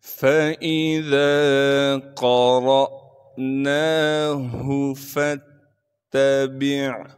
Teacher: تا پر تشدید ہونے کی وجہ سے تھوڑا سا ٹھہراؤ رکھیں گے